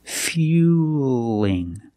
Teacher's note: we see the word fueling with the L between vowels. So, it's a light L.